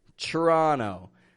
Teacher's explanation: we will just pronounce the T and R, and we drop the vowel. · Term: ChRuh